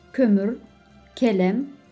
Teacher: K sesi ince ve kalın ünlülerle geldiği zaman biraz farklı söyleniyor. İnce ünlülerle geldiği zaman da aynı Türkçedeki gibi ama yine de biraz daha sert, biraz art damakta söyleniyor.